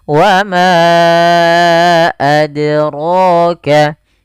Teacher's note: Rohnya tebal, 2 harakat mad tabi'i